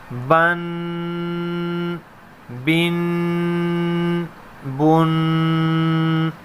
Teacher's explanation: میم 2 زبر من، میم 2 زیر من، میم 2 پیش من، من، من، من۔ غنہ، اس غنے کو ایک الف کھینچیں گے۔